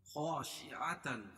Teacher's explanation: خا الف مد الف سے پہلے خا کے اوپر زبر ہے اور خا کو موٹا پڑھیں گے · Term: حروف مستعلیہ